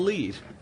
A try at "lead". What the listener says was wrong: Well, lead, not leave.